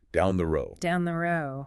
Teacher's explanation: Well, in really natural flowing speech, that final D sound in road can become quite soft. Almost disappears.